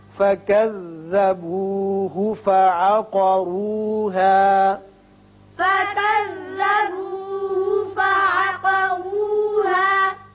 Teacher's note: قاف پر پڑھیے اور را کو بھی پر پڑھیے اس لیے کہ اوپر پیش ہے